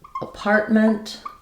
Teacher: We stress on the part syllable rather than apartment.